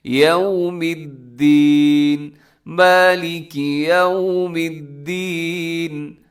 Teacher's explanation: یوم الدین کا خیال کرنا، یو غلط ہو جاتا ہے، تھوڑا سا اپنے ہونٹ گول کرنے ہیں واؤ پہ